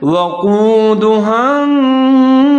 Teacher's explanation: سین کا خیال رکھنا ہے، اس کو سین پڑھنا ہے، سیٹی بجانی ہے